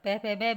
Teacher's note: ये द्वयोष्ट मतलब दोनों होठों से बोले जाते हैं।